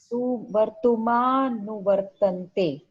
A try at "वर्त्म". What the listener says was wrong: There is no Vartuma. Vartma. Va and Repa. Vartma. Conjunct consonant. Vartma. Vartma. Vartma. There is no Vartuma.